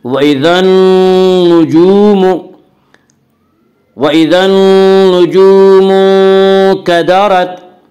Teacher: وَإِذَا النُّجُومُ انكَدَرَتْ، وَإِذَا النُّجُومُ واو مدہ، واو مدہ وہ واو جو ساکن ہو اور اس سے پہلے پیش ہو، واو مدہ کو 1 الف کے برابر کھینچ کر پڑھیں گے۔